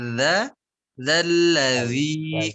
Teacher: Madza, za-nya ujung lidahnya dikeluarkan